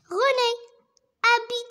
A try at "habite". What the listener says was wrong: alors H muette, on dit pas habite, d'accord? C'est bien. René habite.